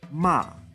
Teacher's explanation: a tone that starts high and falls down low